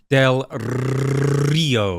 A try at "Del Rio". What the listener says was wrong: You got to roll the R. Del Rio.